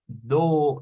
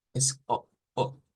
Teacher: Pero recordando que esto no es una O completa, no es como do, no es do, es O, O, una O con un glottal stop, se le llama eso, que significa que cortamos el sonido en la garganta